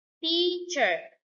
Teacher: The third two-syllable word is teacher. Stress on the first syllable.